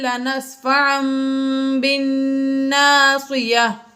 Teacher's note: نون ساکن کے بعد تا آ گیا اس لیے یہاں پر غنہ کیا، اور تنوین کے بعد با آ گیا اس لیے یہاں پر اقلاب ہے، یہاں پر ہم نے غنہ کیا، اور بالناصیہ میں نون مشدد ہے اس لیے یہاں پر غنہ کیا۔